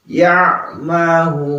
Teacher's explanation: Ain itu letaknya ada di eee tengah-tengah kerongkongan ya.